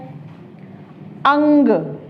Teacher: तो इसका उच्चारण कहाँ से होगा, नासिका से, यानी कि नाक से होगा। ठीक है, अंग का उच्चारण, अनुस्वार का उच्चारण कहाँ से होता है, नाक से होता है